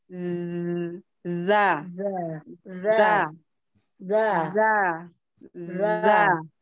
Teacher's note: Za itu ujung lidah bertemu dengan ujung gigi seri atas.